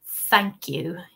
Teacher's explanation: your tongue is sticking right out between your teeth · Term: th sound